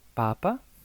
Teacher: En el primer caso tenemos el papá, el acento está en la segunda A, por lo que es padre. Papa, el acento está en la primera A, por lo que es el Santo Padre.